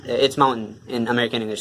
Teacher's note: so the mountain part is stressed and everything else is just cut off